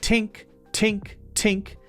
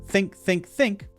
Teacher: you're putting your tongue behind your teeth, not between your teeth. You're blocking the air, not allowing the air to go out, and so it sounds like t, t, t, tink, tink, tink. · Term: T pronunciation